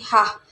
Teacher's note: dihasilkan dengan pita suara terbuka lebar sehingga udara yang keluar digesekan melalui glotis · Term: konsonan laringal